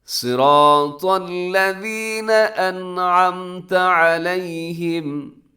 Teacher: الذین نرمی کے ساتھ پڑھنا ہے، آپ نے سیٹی نہ ہو